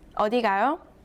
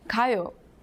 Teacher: The next two syllables are from last lesson, and they mean I'm going, 가요. But if you add a question mark and read the last syllable with a rising tone, the whole sentence means where are you going? 어디 가요? The second sentence ends with the same two characters but without a question mark.